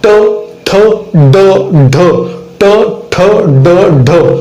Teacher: कंठ आणि टाळूच्या मधली जी कडक जागा आहे त्या ठिकाणी टच होते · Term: मूर्धन्य वर्ण